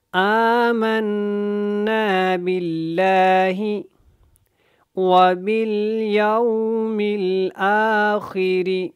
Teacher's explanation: حمزہ کے اوپر جو کھڑی زبر ہے اس کو بھی آپ نے تھوڑا کھڑا کر کے لمبا کر کے پڑھنا ہے۔ آمنا باللہ وبالیوم الآخر، وبالیوم الآخر، اس میں خاپر ہے، باقی آپ نے را کو جو ہے وہ باریک پڑھنا ہے، اور یو کو یو کی طرح نہیں پڑھنا۔ · آمنا کے اوپر بھی آپ نے غنہ کر کے پڑھنا ہے